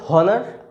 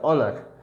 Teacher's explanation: কীরকম যদি বলি, এটার উচ্চারণ হচ্ছে অনার, উচ্চারণ হচ্ছে অনার, এর আগে কিন্তু অ্যান বসবে, কারণ কি এর উচ্চারণটা অ দিয়ে শুরু হচ্ছে। যতই এইচ থাকুক না কেন, এইচটা অ এর উচ্চারণ নিচ্ছে, হয়ের উচ্চারণ নিচ্ছে না। এটা উচ্চারণ কখনই হনার এটা হবে না।